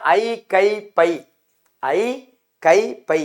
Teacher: தனக்குரிய இரண்டு மாத்திரை அளவில் முழுமையாக ஒலிக்கிறது